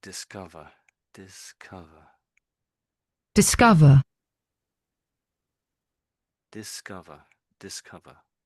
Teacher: And where are they giving the emphasis? Yes, it's it's on the O, isn't it?